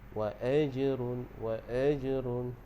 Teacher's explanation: Kemudian waqaf tu kita waqaf dengan ma'aril sukun. Dan pada wa'aj, wa'aj tu dia jadi hukum qalqalah. Qalqalah sughra, jadi bagi melantun. Wa'ajrun, wa'ajrun, kita lantunkan.